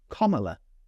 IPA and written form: kɒˈmələ (Kamala)